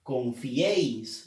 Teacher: La E lleva fuerza de voz.